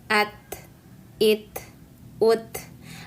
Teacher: Pada saat kita melepaskan lidahnya nanti akan terbentuk hamz, ya, atau percikan udara. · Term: ta sukun